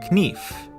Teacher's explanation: in middle english it was pronounced kneef but after the vowel shift the k became silent